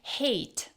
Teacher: in fast, casual speech, native speakers often say hate without the clear T at the end. They cut off the T.